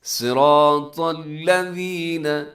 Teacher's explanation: صاد موٹا ہے، را موٹا ہے، طا موٹا ہے